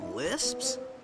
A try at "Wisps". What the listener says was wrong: No, Wisps, with a W.